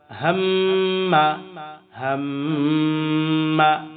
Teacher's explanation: হা মিম জবর হাম মিম জবর মা হামমা হামমা। মিমকে কিন্তু আবার গুন্নাহ করেছি।